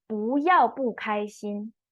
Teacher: because 开 first tone, the 不 is pronounced as fourth tone as it is shown on the pinyin.